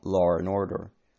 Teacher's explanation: The long vowels allow a linking R between vowels, thus law and order become law and order, with an R between law and.